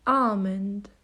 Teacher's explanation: almond this is commonly mispronounced as almond it should be almond the L there is silent